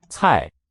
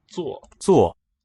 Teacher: So C is a t sound, like the Z in pizza, t with extra air coming out.